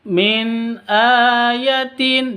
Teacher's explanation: Non sukun, non mati bertemu dengan hamzah. Cara bacanya jelas, tidak boleh didengungkan.